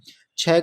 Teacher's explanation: छ का उच्चारण तालू से होता है